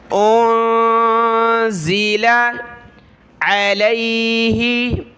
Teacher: عین کو گلے سے نکالا